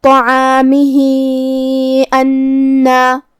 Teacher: اگر ہم یہ آیت کو اگلی آیت کے ساتھ ملا کے پڑھے تو ہم اپنی آواز 2 سے 4 مد کے برابر لمبی کریں گے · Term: مد صلہ کبریٰ